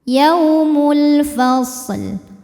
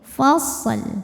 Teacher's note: Yaumul fasl. Shadnya dialirin baru ke lam, jangan sampai shadnya mantul ya.